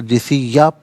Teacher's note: یہاں وقف پڑھیں گے تو جثیہ پڑھیں گے کیونکہ دو زبر کی ترمیم وقف میں الف سے چینج ہو جاتی ہے